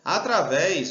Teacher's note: o acento tá na última sílaba Então esse daqui é uma oxítona também fora não pode também